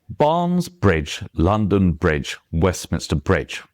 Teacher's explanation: Barnesbridge, London Bridge, Westminster Bridge. And your stressed syllables there are coming out in absolute rhythm, but you just speed up the other syllables in order to to fit it in, if you see what I mean.